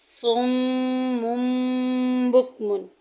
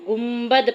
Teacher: اگر نون ساکن یا تنوین کے بعد با آ جائے تو اس کو میم سے بدل کر غنہ کر کے پڑھیں گے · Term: اقلاب